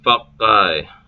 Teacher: the pause is in the middle of the consonant itself, not after the preceding vowel. Yeah, Swedish.